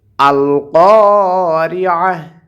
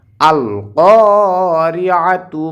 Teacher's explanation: আয়াতের শেষে যদি গোলতা থাকে তাহলে সেখানে ওয়াকফ করলে গোলতাটা হা হয়ে যায়, এজন্য এখানে গোলতাটা হা হয়ে যাবে যদি আমরা এখানে ওয়াকফ করি।